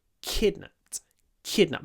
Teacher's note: Lots of aspiration and a little pause.